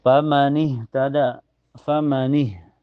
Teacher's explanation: makhraj ha itu keluar dari tenggorokannya sejajar dengan Hamzah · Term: ha sukun